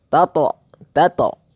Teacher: Yang tebal itu cuma huruf to-nya saja ya